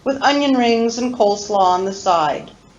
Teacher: Notice that the function words with, and, on, with, and on all receive no stress, and they are reduced. We use reduced vowels.